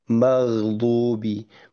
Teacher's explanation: huruf ghain ini itu punya sifat yang bukan qalqalah. Justru justru tidak memantul